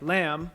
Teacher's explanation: a vowel and nasal sounds where in a word like lamb the nasal m sound was actually coloring the vowel before it turning ah into air